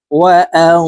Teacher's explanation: নুন সাকিনের পরে ইকফার হরফ যা আসছে, এই কারণে এই নুন সাকিনকে নাকের ভিতরে লুকাইয়া গুন্নার সহিত পড়ব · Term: ইকফাহ গুন্না